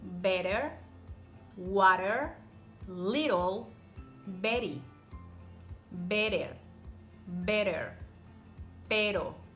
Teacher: when the T appears between two vowels the sound that is produced is the soft R in Spanish